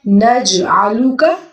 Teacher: جیم پہ ہم کلکلا کریں گے